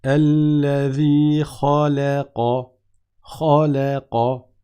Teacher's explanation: la lettre lam qui est entre les deux, elle n'est pas emphatique.